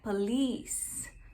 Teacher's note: Muita gente fala errado essa palavra, porque coloca a sílaba tônica no começo e fala police, mas não, a sílaba tônica tá no final